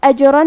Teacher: کلمت اجرن میں حرف الجیم کو ہلاتے ہوئے پڑھیں گے، یہاں جیم کا حکم ہے قلقلہ